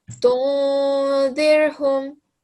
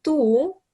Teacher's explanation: when you join the tu with the noon, you give it a nasal sound.